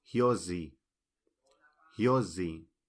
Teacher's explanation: la s entre dos vocales se pronuncia Za como la z inglesa